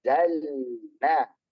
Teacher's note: Lam dulu jelas, baru nun.